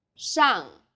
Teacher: the first syllable here is made of an initial 诗， and a final 昂， and a fourth falling tone